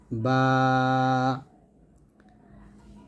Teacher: বা উচ্চারণ হবে দুই ঠোঁট মিল করে আমরা পাতলা উচ্চারণ করব